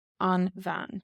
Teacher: And it changed how we pronounce the B. Instead of a B, we get a V sound.